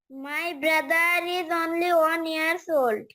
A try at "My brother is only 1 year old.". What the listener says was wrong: ইয়ার্স না, 1 ইয়ার।